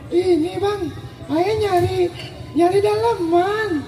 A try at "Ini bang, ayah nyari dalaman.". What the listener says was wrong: Suara lu kurang perek. Rada perek dikit dah.